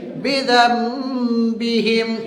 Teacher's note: تو نون ساکن کی آواز کو کیا کریں گے؟ میم ساکن میں بدل کر پڑھیں گے۔ · نون ساکن کے بعد با آیا ہے تو وہاں پہ غنہ کریں گے، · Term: اقلاب